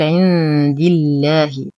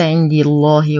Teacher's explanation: ننتقل من كسرة الدال إلى تشديد اللام المرققة في اسم الجلالة جل في علاه لأنها سبقت بكسر.